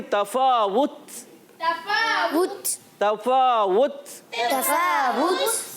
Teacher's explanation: शदीदा में सख्ती से आवाज़ बंद होती है और हम्स में पस्ती के साथ, नरमी के साथ सांस जारी होता है। तो ये सांस जारी होने की वजह से ये आवाज़ आती है। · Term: शदीदा महमूसा